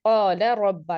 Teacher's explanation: لام اور را تو آ رہے ہیں لیکن مرج نہیں کر رہے نا ہم، قال ربا دونوں متحرک ہیں تو حکم اظہار کا آ گیا.